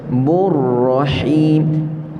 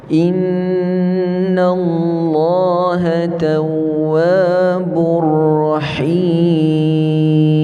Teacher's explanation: ha sempitkan mulut halqum kita, tengah halqum